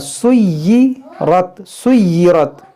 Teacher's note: या मुशद्दद है, तो इसको पढ़ेंगे दो बार